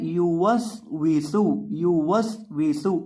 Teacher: इसे पढ़ना है यू वस वीसु यू वस वीसु और सीन के अंदर आपने सिटी पैदा करनी है, यहाँ भी और यहाँ भी, दोनों जगह पर आपने सीन के अंदर सिटी पैदा करके पढ़ना है।